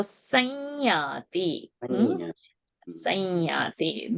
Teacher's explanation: So the anuswara on the sa will become nya because the next word is ya. So sanyati.